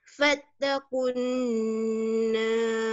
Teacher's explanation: Kena gunnah di nun bertanda tasydid.